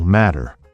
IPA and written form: ˈmæɾər (matter)